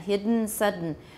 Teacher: in english they occur at the end of a word so d plus a nasal release